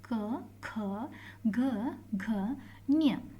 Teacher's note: ಕ ವರ್ಗ ಇವುಗಳನ್ನ ನಾವು ಏನಂತ ಹೇಳ್ತೀವಿ ಅಂದ್ರೆ ಕಂಠಾಕ್ಷರಗಳು ಅಂತ ನಾವು ಹೇಳ್ತೀವಿ ಕಂಟಾಕ್ಷರಗಳು ಅಂದ್ರೆ ಕಂಠದಿಂದ ನಾವು ಅವುಗಳನ್ನ ಹೇಳೋಕೆ ಹೇಳ್ತೀವಿ